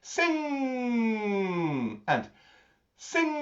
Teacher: that lovely sound, NG sound at the back of your throat. Like you've just said the word sing or song or ding or dong.